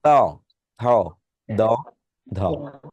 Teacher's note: আপনার জিহ্বাটা উপরের পার্টির দাঁতের নিচে স্পর্শ করে তাই এটাকে বলে দন্ত বর্ণ